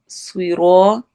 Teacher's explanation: را کو الف مدہ کے ساتھ ہم نے لمبا کرنا ہے